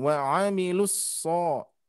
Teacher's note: hati-hati tidak kepanjangan lus ya, tapi langsung wa 'amilus so ya, langsung ke tasdidnya